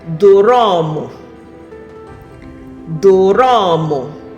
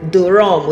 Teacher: my accent is going to introduce vowels to separate the consonants for me, to help me pronounce the word properly. So as an Igbo person, my Igbo accent, the original Igbo accent, is going to pronounce that word as doromo.